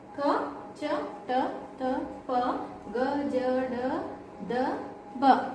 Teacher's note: ಕಡಿಮೆ ಉಸಿರಿನಿಂದ ಉಚ್ಚರಿಸುವ ಅಕ್ಷರಗಳೇ ಅಲ್ಪ ಪ್ರಾಣಾಕ್ಷರಗಳು.